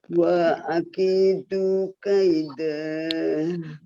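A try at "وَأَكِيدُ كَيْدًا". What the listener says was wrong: Itunya jangan dipanjangkan. Wa akidu kaida. Wa akidu. Iyanya dipanjang. Wa akidu kaida. Di A-nya jangan dipanjangin ya. Wa akidu. Wa akidu kaida.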